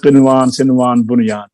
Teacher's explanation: एक लफ्ज में नून और हरफ यरमलून जमा है, लिहाजा यहाँ पर गुन्ना नहीं किया जाता, इदगाम नहीं किया जाता। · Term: इजहार मुतलक